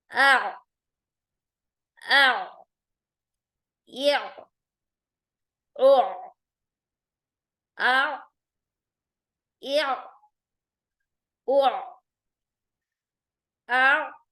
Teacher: अलिफ, क्योंकि मुंह के खाली हिस्से से अलिफ जबर के साथ है। और आइन हलक के बीच वाले हिस्से से बगैर झटके के नरम आवाज के साथ हम अदा करेंगे